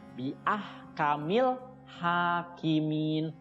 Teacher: Ha itu panjang 2 harokat, ya, namanya mad tobi'i